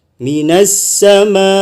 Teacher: layar ketemu dengan hamzah, bacaannya sampai 5 harokat